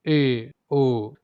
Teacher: अर्ध संवृत, उच्चारण में मुख आधा बंद रहता है।